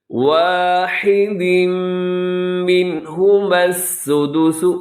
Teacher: واحد پہ تنوین کے بعد میم ہے، ادغام ہوگا غنّے کے ساتھ